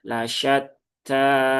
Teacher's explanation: Kemudian taknya bertasdid, tunaikan tasdidnya. Kemudian di situ ada fathah berdiri. Maka dibaca panjang dua harokat.